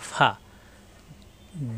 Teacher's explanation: ফা উপরের দুই দাঁতের আগা নিচের ঠোঁটের পেটে লাগবে